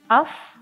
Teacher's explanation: apabila sukun, maka pita suara itu tidak bergetar. Af, nah tidak bergetar, jadi tetap gitu, tetap stay. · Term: hamz